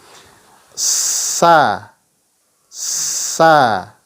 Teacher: untuk huruf sin, makhraj atau titik artikulasinya adalah dari lidah di antara gigi atas dan bawah. Letaknya lebih ke bawah.